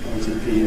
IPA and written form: ˈeɪti (80)